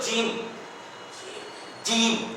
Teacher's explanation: اگر زبان کو تالو میں سٹائیں گے تو جیم، جیم نکل رہا ہے